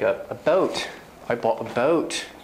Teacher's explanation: In England, often instead of O, it's more like a schwa, it's the plus an U, like a boat.